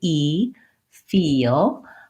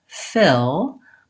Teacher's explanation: when I'm saying e like feel I have a tense tongue it's high and in the front and I might feel some tension in my face so when